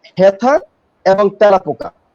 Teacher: হেথা এবং তেলাপোকা, এই 2টাই হচ্ছে এ ধ্বনির বিবৃত উচ্চারণ